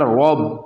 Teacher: تو یہاں پر ہا کو کھینچیں گے ایک الف کے برابر، کیونکہ یہاں پر ہا کے نیچے زیر ہے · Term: کھڑا زیر